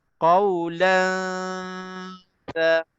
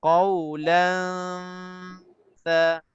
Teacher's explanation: Dua harakat itu kita bahagikan, satu harakat untuk tanwin dan satu harakat untuk kita dah ikhfakan, sembunyikan tanwin ke dalam ta. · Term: ikhfa haqiqi wusta